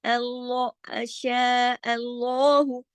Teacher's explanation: لام یہاں پہ ہیوی کیا جائے گا کیونکہ اللہ کے نام سے پہلے زبر ہے. جب بھی اللہ کے نام سے پہلے زبر ہوگی تو اللہ کے نام میں لام کو ہیوی کیا جائے گا، ہاں کو نہیں، ٹھیک ہے.